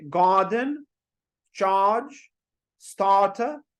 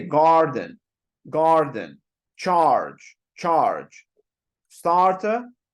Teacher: R is silent in British English · Make the sound a bit longer. Remember, if we are talking about British English, we would not be pronouncing R here.